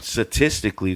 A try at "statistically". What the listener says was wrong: You missed that first T. You got the second T, but that first T is just it eludes you. it evades you.